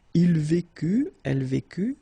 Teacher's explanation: final T not pronounced. So basically you've got only one form here, and it's vécu for all these three persons.